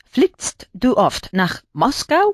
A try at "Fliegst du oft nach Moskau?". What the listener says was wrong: Sí, la I de fliegst más larga.